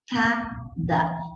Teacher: Na escada, eu tenho encontro consonantal porque eu pronunciei o S e eu pronunciei o C.